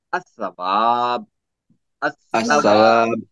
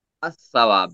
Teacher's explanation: الثواب، الثواب، کیونکہ لام اور سا کا مخرج زبان کی نوک ہے، دونوں ایک کو قربان کرنا پڑے گا، یعنی آسانی کے لیے لام کو قربان کر دیا جاتا ہے اور سا پر جو ہے تشدید لگائی جاتی ہے۔ الثواب، لام کو قربان کر دیا گیا۔